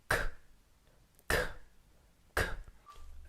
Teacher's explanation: soft palate and your tongue should be tense and hard and the 'k' sound is a stop sound so you push the air out of your mouth and then immediately cut off the sound